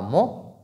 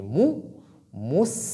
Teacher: La lettre mim porte dhamma, donc nous devons allonger les lèvres pour que la dhamma soit complète. On ne dit pas mo, on dit mou, mous.